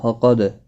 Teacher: فقد، قد دال قاف مستعلیہ ہے، پر پڑھا جائے فقد، دال ساکن پر قلقلہ ہوگا، حروف قلقلہ 5 ہیں